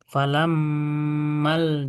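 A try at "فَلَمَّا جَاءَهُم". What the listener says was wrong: Ma. Ma. Ma. Bukan mal. Maja.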